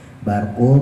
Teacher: barnya tebelin karena rohnya jatuh setelah fathah